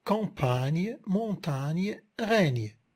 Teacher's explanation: Il s'agit d'une consonne nasale, apico-alvéolaire et sonore. Elle est palatalisée puisque son articulation se termine plus en arrière au niveau du palais. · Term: Le son gne